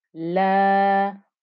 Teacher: So you have a lam with a fatha followed by an alif. So a fatha followed by an alif. This gives you a 2-count stretch.